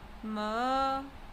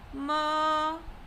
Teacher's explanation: The first tone starts at a high level and remains constant at the level. It is the same as saying without a change in voice.